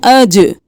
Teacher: جیم قلقلہ ہے، اجرہ نہیں کرنا، اج، رو موٹا ہے